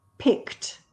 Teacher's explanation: so the sound is unvoiced there's no vibration yes so with the ed sound it's a t sound